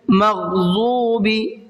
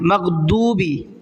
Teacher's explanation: یہ ضاد جو ہے، اس ضاد کی جگہ دال پڑھتے ہیں